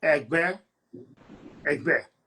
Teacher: The tone on the word is re, mi